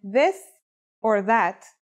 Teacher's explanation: it's pronounced with the tongue between the upper and the lower teeth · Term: voiced sound